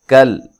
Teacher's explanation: کاف کو باریک، لام کو ہلانا نہیں ہے